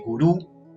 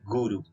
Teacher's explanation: en sánscrito se dice guru con acento en la primera